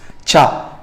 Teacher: Combination of plosives and fricatives. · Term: affricates